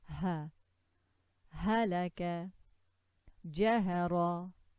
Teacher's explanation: it comes from the bottom of the throat. This is ha, like this. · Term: different ha